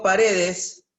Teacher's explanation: Tiene la mayor fuerza de voz en la re. Por lo tanto, es grave.